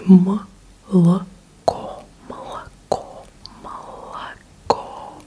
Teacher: In Russian, you pronounce O as an O, only when it's stressed. So молоко, the last syllable is stressed.